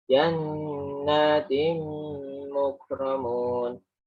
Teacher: tanwin dengan mim guna dengung masuk